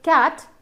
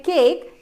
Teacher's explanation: If I say cat, the sound of A is short, cat. But when I say cake, it is a bit long sound, right?